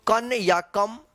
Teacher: इस अनुस्वार का कहीं पे आधा न तो कहीं पे आधा म उच्चारण होता है